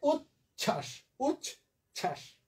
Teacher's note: একইভাবে উচ্ছ্বাস, চ ছ যুক্ত ছিল আগের থেকে, নতুন করে তার সাথে বফলা যুক্ত হলো, ফলে ওই বফলা উচ্চারিত হবে না।